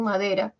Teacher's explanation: Y en madera, la nasal ma es siempre sonora. Da es una oclusiva sonora. Y ra, una vibrante simple también sonora. Todas son sonoras.